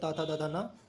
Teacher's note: ता वर्ग दंत से बोला जाता है